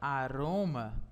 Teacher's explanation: Em aroma, a sua sílaba tônica está em ro. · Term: paroxítona